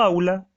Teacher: como yo digo aula y el acento la mayor intensidad la carga sobre la primera tengo un diptongo